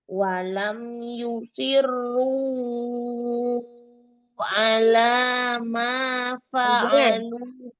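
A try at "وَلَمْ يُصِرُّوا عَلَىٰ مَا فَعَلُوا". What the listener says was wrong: Ru-nya 2 aja. Itu bukan hamzah tapi ain sesudahnya ya. Yusirru ala 2 harokat aja.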